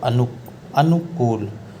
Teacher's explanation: दीर्घ उ और एक में लघु उ है, इसलिए अनु, अनुकूल, 'कू' में दीर्घ उ होगा।